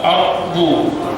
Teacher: jangan Anda baca aredu, re bukan huruf qalqalah. Tebal, ardu.